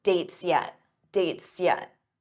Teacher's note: Notice how that S blends into the Y for yet